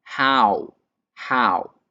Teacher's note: Esa es la pregunta how, que su pronunciación es con el diptongo AU